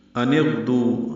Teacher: حمزہ کو نون سے ملانا، نون کو غین سے ملانا تھا ، نون ساکن تھا لیکن نون کو غین سے ملانا ہے،